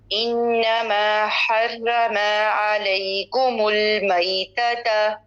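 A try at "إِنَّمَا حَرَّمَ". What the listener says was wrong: جی را کو موٹا کریں گے، را کے اوپر شد ہے اور زبر ہے تو اس کو موٹا کیا جاتا ہے. انما حرم.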